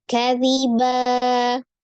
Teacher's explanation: fathah tanwin itu dirubah menjadi fathah yang panjangnya dua harkat jadi fathah tanwinnya berubah menjadi fathah Nah terus kan ada alifnya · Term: mad iwad